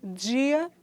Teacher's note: Apresentamos o j, que é um fonema africado, alvéolo palatal vozeado